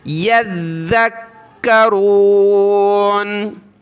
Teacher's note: یا کو ذال کے ساتھ، ذال کو کاف کے ساتھ ملانا ہے، سخت کرنا ہے دونوں کو تشدید کی وجہ سے. اس سخت کرنے کی وجہ سے آپ نے ذال کو زا نہیں پڑھ دینا.